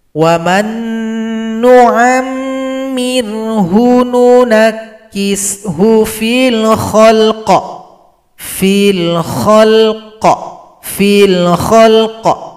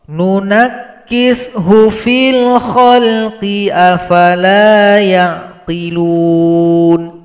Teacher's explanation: Kalau kita berhenti pada huruf qaf, qafnya disukunkan, kemudian berikan bunyi pantulan, bunyi qalqalah. Ada suara yang memantul.